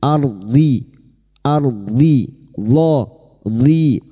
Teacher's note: huruf dhad tepi lidah nempel pada gigi geraham atas, boleh kiri boleh kanan